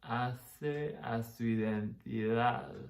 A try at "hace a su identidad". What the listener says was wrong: Clarity of those, a su identidad would be more distinct from each other, the vowels. I would even clarify, you're slowing it down, but you're not doing the extra picking out of those specific small words.